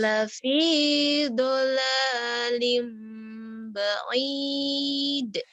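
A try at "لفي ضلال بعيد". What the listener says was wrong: Nah itu yang bikin suara kamu aneh. Udah tinggi terus turunnya ngedadak. Kalau kata orang bilang itu namanya sumbang. Padahal kamu udah bagus awalnya. Lafi dolalim ba'id. Kalau mau tinggi aja terus. Kalau mau datar datar.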